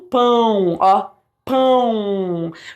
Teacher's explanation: Você tem um ditongo com um som mais nasalizado, que vem por causa desse tio aqui bem forte, certo?